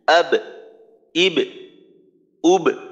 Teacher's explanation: পাতলা হরফ চিকন হরফ, এর কলকলা হবে নিম্নমুখী